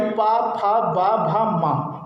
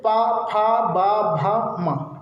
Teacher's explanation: ठीक है, उसके बाद बात करते हैं हम लोग पा वर्ग का, यानी पा वर्ग के जितने भी व्यंजन आपके होंगे उनका उच्चारण कहाँ से होता है? ओठ से।